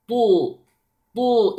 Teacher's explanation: the wow is light and then the ta is strong and heavy